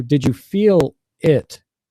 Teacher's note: notice how I pause between feel and it